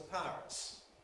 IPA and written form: ˈpaərəts (pirates)